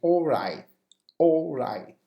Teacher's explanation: Now you have to notice the glottal stop at the end of which means you don't finish, you don't pronounce the T, the final T, but the sound it comes from your throat